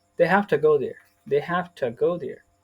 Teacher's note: we can say have to as hafta